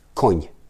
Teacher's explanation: the N is super short, like koń. It's just N, and then it's done.